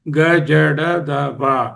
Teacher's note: వర్ణాన్ని పలికేటప్పుడు స్వరతంత్రులు కంపించి నాదం ఏర్పడితే ఘోషవర్ణం